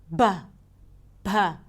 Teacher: So there is the regular B as in bay, and in Hindi Urdu there is also an aspirated voiced stop sound like ba, ba